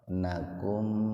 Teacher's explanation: Jadi mimnya dibaca jelas. Dibaca idzhar. Idzhar itu jelas. Syafawi, bibir. Jadi dibaca jelas di bibir. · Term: Idzhar syafawi